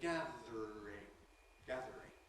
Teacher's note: we get an /r/-link before the following ‘-ing’ suffix, we have the option of turning /ər/ into /r̩/ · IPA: /ˈgæðr̩ɪŋ/